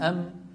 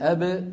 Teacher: أيضا من الشفتين. أم، لكن الميم فيها غنة من الخيشوم، الباء ليس فيها غنة